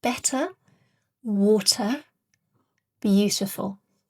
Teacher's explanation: we have a clear T because the T comes before the schwa sound